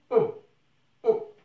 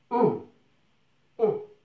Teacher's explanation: لاحظ عزيزي هناك أ وأم، لا نقول أم، نقول on. Donc c'est une voyelle nasale, c'est une voyelle qui vient du nez.